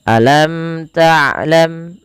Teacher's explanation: Dijelaskan dan tidak boleh ditahan. Tidak boleh dibaca alam tlam dengan menahan bunyi mimnya. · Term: izhar syafawi